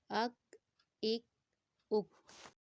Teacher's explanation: آواز کو ہلائیں گے نہیں اور کاف کو باریک پڑھیں گے